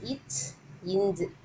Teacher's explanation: நாவின் இடை அன்னத்தின் இடையை தொடுவதால் பிறக்கிறது